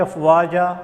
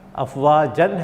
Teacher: وقف بالابدال یعنی بدل کر پڑھنے والا، کلمے آخری حرف پر اگر دو زبر کی تنوین ہو تو اسے الف سے بدل کر ایک الف کے برابر ہی لمبا کر کے ٹھہرنا ہے